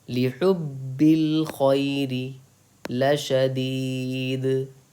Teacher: با پہ آپ کو سختی کر کے پڑھنا ہے، دو حرف کی تاخیر کے برابر سختی کرنی ہے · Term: تشدید